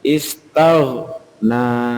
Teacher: ghainnya itu mboten qalqalah. Ya, jadi malah istagh ditahan, tidak sampai dipantulkan, istaghna. Seperti maghbu itu juga tidak sampai dipantulkan.